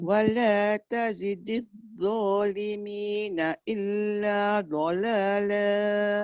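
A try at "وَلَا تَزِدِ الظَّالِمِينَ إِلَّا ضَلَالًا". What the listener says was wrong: Dha, dia dah terbalas tadi bunyi. Cuma kalau dia bunyi wala tazidil zalimi, dia tak ada suara. Dia tak melepaskan rokhawah. itu rokhawah. Lepaskan.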